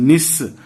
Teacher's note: मूर्धा से मूर्धन्य स का, जहां से ट ठ ड ढ बोलते हैं निश, वहां से बोलेंगे तो मूर्धन्य स, और दांत से दंत स, जहां से त थ द ध बोलते हैं